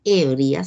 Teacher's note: La palabra ebrias, las personas ebrias, dice aquí, brías se pronuncia en una sola sílaba. Por lo tanto, no existe ahí un hiato acentual, sino que está colocado por error el acento.